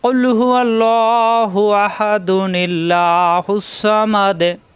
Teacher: এখানে যদি অক্ফ করি তাহলে দালে সাকিন হয়ে যাবে, আর মিলিয়ে পড়লে তখন এখানে তানবিনের কারণে এখানে নুন আছে, এই নুনকে এখানে নুনু কিতনি হিসেবে ব্যবহার করে দুই হাত মিলাতে হবে। তখন নুন যে নি, এই নি মিলবে লামের সাথে। নিল্লাহু এভাবে পড়তে হবে। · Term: নুনে কুদনি